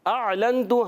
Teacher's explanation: نون کو چھپائیں گے، ایک الف کا غنہ کریں گے اور تا پر پیش حرکت کو بغیر کھینچے ادا کریں گے۔ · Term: اخفاء